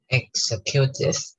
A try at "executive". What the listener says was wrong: The stress the syllable has to go front. Executive. Yeah, executive. Yeah, executive. 这个就要变化一下. You need to change the sound. Executive.